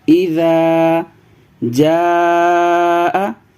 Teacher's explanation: اذا جاء، یہ حرف مدہ ہے، یعنی اس کے اوپر مد ہے، حرف مدہ کے بعد حمزہ ہے، لہذا مد متصل ہوگا، اس کو زیادہ کھینچنا ہے۔